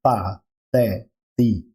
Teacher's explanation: Esse TH ele é como um TH de um teatro. É um T plosivo, é um T com a língua, a ponta da língua atrás dos dentes incisivos frontais, né? Os dentes incisivos ali do meio da boca em cima, superiores, né?